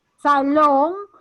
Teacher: tiene fuerza de voz en la última sílaba